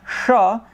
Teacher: it's a cerebral you're saying you're going up and putting your tongue in the palate right upwards